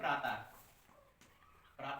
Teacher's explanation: विसर्ग कहलाती हैं। इनका उच्चारण जो है आधे हा की तरह होता है।